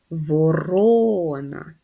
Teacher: наголос на другий склад